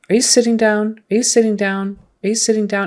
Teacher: it's not really a d it's not really an aspirated tea it's somewhere in the middle so don't go so soft on your tees that they sound